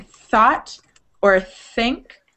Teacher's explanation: There's a voiceless TH that's like breathy, like where breath actually comes out of your mouth.